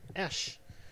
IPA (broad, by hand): ʃ